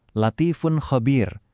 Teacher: Ingat ya di contoh terakhir latifun khabir ini jangan biarkan lidah kita jadi malas. Bunyi fun harus benar-benar terdengar seperti huruf N asli bukan sengau.